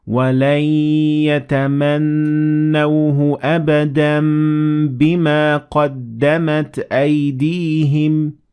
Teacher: turning the noon at the end of the Tanween into a meme